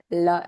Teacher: the air flows through the sides of the mouth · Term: l sound